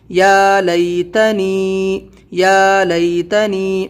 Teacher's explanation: یا کو تھوڑا کھینچنا ہے، کھڑا زبر ہے یہاں